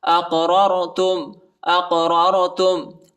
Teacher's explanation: حمزہ کو قاف کے ساتھ ملائیں گے اور قلقلہ بھی کریں گے